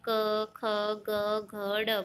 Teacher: गले से करोगे, कंठ से आवाज़ आएगी, वाइब्रेशन होगा। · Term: उच्चारण स्थान कंठ